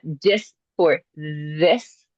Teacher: we're stopping our air flow when the air flow should be held on to